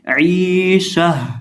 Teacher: آخر سے یہ جو گول تا ہے اس کو ہم ہائے ساکنہ سے بدل دیں گے، اس کو ہم ہا سے بدل دیں گے اور اس کو ہم ساکن بھی کر دیں گے.